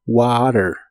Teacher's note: la palabra water la puedes pronunciar con t o en inglés americano esa t la pronuncian como r